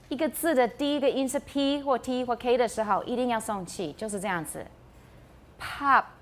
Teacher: The first one is aspirated and that's required. Pop. But when it's the last sound in the word, we often don't explode it, we don't release the stop, so we have pop.